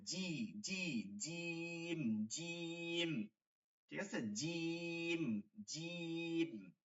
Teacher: জিহ্বাটা একদম লেগে গেছে উপরের দিকে কোন ফাঁকা নাই মাঝখানটা কোন ফাঁকা নাই এটা হচ্ছে কি শক্ত করে জিম জিম ঠিক আছে জিম জিম